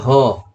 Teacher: कंठ के भीतर से इसकी आवाज आती है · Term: स्वर तंत्रीय